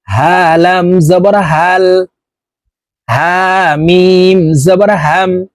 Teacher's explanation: এটি ছোট হা হলকের শুরু থেকে উচ্চারণ করব